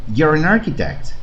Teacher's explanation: aquí estoy pegando la n con la a de Arquitecto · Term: consonante vocal